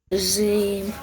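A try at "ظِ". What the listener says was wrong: In order to make it heavy, just make your lips a little bit rounder. It will automatically, the sound will be heavier. Remember, from which place do we read the letter Zhaw? Where do we touch our tongue in Zhaw?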